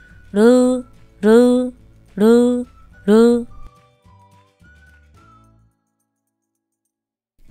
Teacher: R phát âm giống R trong tiếng Việt, cong lưỡi, dây thanh không rung